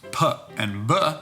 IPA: p and b